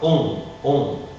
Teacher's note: Bon, nous on dit nasal, on pourrait dire oronasal, c'est-à-dire oral et nasal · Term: voyelle oronasale